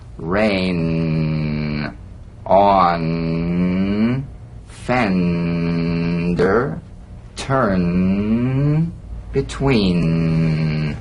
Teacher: the N is a nasal consonant made with the tongue blade to the upper gum Ridge its most resonant and it's well forward placed